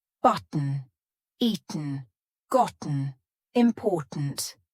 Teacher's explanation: my throat is doing some important work to make that glottal T sound